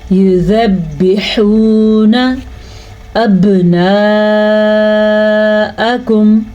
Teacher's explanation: با کے اوپر کلکلا ہو رہا ہے کیونکہ با پہ ساکن آ گیا ہے. وَيَسْتَحْجُونَ نِسَاءَکم، ہا کو واضح کر کے پڑھنا ہے.